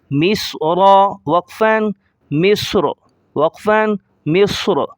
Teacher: صاد کو موٹا کریں گے، را کو موٹا کریں گے